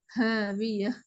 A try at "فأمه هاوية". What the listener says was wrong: இது ஓத போகல சவுண்ட் மாறுது. ஹேக்கு மாறுது. அதாவது தனியாக நீங்க சொல்ல உச்சரிக்கிறதுக்கும் வசனமாக உச்சரிக்கிறதுக்கு மட்டும் வித்தியாசம் வரக்கூடாது.